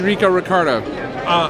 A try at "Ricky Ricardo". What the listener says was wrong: Who's Rico Ricardo? Ricky Ricardo. No, you said Rico Ricardo.